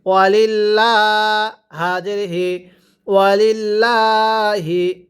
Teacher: জের থাকলে আল্লাহ শব্দটিকে চিকন করে পড়তে হবে